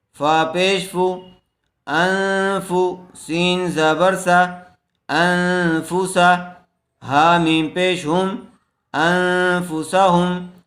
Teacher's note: نون ساکن کے بعد حروف اخفا میں سے فا آیا ہوا ہے اس لیے غننے کے ساتھ اخفا کر کے پڑھیں گے